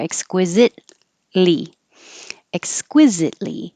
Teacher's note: you don't have to say the t in exquisite because your tongue is going to the l so you just hold it there